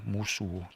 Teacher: So if you think of this as an O but you pronounce it like an O like U like shook or book and you say moose o moose. It's not really a w but we write it that way cuz it's convenient I guess but it really is more like an O. It's like a rounding of the lips.